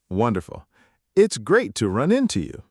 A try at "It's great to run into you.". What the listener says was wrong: Close. The stress goes on run. It's great to run into you.